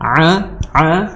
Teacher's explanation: makhrajnya di tenggorokan pertengahan. A ya, seperti orang tercekek seperti itu. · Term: ain